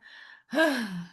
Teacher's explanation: Ke kan memang itu makhrajnya kan dia paling jauh ya. H itu kan paling jauh ya di di bawah tenggorokan di ee tenggorokan bawah ya.